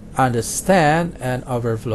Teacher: For compound verbs, the stress is on the second part.